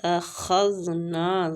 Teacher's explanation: خا مستعلیہ حروف ہے، اس کو پر پڑھنا ہے